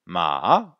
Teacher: le troisième ton qui est en bleu descend puis remonte. Ma. Ou des fois il ne remonte pas.